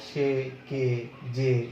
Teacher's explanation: এক অক্ষর সর্বনাম পদের এই এ ধ্বনি সংবৃত হয়